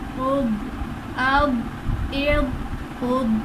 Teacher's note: حرف مستعلیہ میں ضاد ہے تو ضاد کو ہم نے پر کر کے پڑھنا ہے، نہ کہ اس پہ قلقلہ کرنا ہے